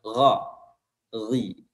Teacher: Huruf ghain keluar dari tenggorokan bagian atas.